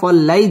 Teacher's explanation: ওয়াল্লাই জবরের বাম পাশে জজম ওয়ালা ইয়া লিনের হরফ তাড়াতাড়ি পড়তে হবে